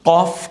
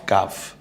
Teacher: জিহ্বার গোড়া থেকে উচ্চারিত হয় কফ আর জিহ্বার গোড়ার কিছু উপর থেকে উচ্চারিত হয় কাফ একটু পাতলা আওয়াজে একটু গম্ভীর আওয়াজে কফ কাফ তা ত তা